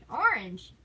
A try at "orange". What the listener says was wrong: Yeah, but it's not a hard A. You don't pronounce it orange. Unge. A-N-G-E. Unge.